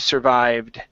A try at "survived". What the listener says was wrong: Okay, almost. So you're pronouncing this E sound right before that D. You're saying survived. Okay, instead of survived, survived. Okay, that's pretty close.